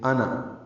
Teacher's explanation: انا کہ نون کو ملا کر پڑھتے ہوئے لمبا نہیں کرتے ، انا یہ الف نہیں پڑھا جائے گا، نذیر میں دال